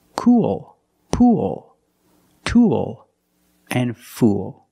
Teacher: the same pronunciation is the long u sound plus the dark l